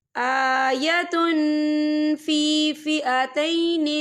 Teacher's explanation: قَدْ كَانَ لَكُمْ آیَةٌ فِي فِئَتَيْنِ الْتَقَتَا، یہ دیکھیں آیتن، تا پہ تنوین ہے، تنوین کے بعد جو ہے فا آ رہا ہے، اور فا جو ہے اکفا کا ورڈ ہے، تو ہم یہاں اکفا کریں گے، تنوین کی آواز کو ناک میں چھپائیں گے۔